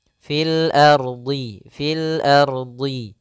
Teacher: Huruf dhadnya tebal ya